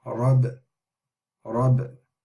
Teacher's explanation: the ba, you hear a slight echo sound as well.